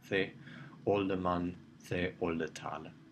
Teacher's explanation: The e is being less and less pronounced, and in the end, the speakers start to drop it, every now and then, but in the long run, the whole thing just gets lost.